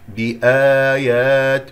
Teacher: صلى الله عليه وآله وسلم. بآيات الله، تلاحظون مد بدل هنا لدينا ألف ساكن قبلها همزة مفتوحة، نمده حركتين